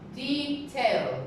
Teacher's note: there are two syllables and the stress is on the first syllable